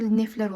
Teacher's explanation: samitlə başlayan şəkilçi gələrsə bu zaman t düşəcək